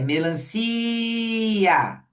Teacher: a gente estende o som do si e depois fala o A. E eu vou repetir, o A vai ser vogal. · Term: sílaba tônica